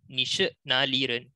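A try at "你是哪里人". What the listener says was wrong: So you need to have the asking voice. If your asking voice is really good, then Lao Shu will say excellent.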